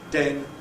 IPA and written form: den (den)